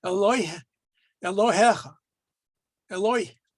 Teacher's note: you may hear people who pronounce their Hebrew in a very particular form of Ashkenaz's pronunciation, and O's are always oi. You'll hear them always saying oi.